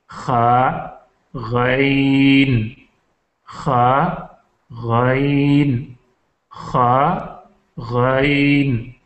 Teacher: لیکن ہا سے پہلے اگر ہم خا پڑھ لیں تو خا یہ منہ کی طرف ہوتا ہے، حلق کا آخری حصہ جس کو ادنائے حلق کہتے ہیں جو منہ کی طرف ہے وہاں سے خا نکلتا ہے. خا اور غائب یہ دونوں ادنائے حلق سے نکلتے ہیں.